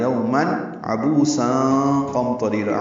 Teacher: تنوین کے بعد عین آنے کی وجہ سے اظہار ہے. یومن عبوسا قمطریر عین وسط حلق سے ادا کریں گے.